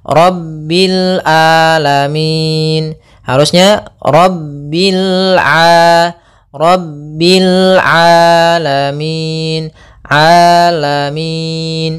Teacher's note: hati-hati jangan sampai merubah huruf ainnya menjadi Hamzah banyak yang terjadi kesalahan dalam pelafalannyaitu meng dengan Alif atau Hamzah